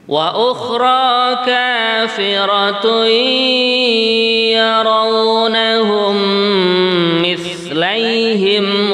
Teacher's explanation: Kalimat kafiratun, tanwin bertemu ya pada lain kalimat, namanya idgham bihunnah. Jadi mendengungnya dua harokat.